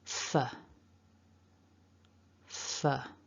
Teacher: Then we've got another short syllable with that f. So top teeth to bottom lip for the f. And then a schwa.